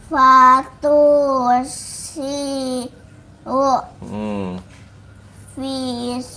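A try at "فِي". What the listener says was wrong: panjang fin-nya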